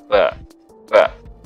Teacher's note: Nah, kalau membulat itu huruf wa, ya, wa. Kalau menutup rapat itu ba, tanpa ada yang keluar udara di hidung